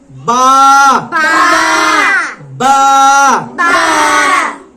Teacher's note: দুই ঠোঁটের ভেজা জায়গা থেকে